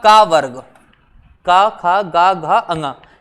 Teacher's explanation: इनका सब का उच्चारण कहां से होता है गले से होता है कंठ से होता है